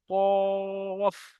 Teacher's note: এটাকে বড় কফ বলা হয়। মোটা করে উচ্চারণ করতে হয়।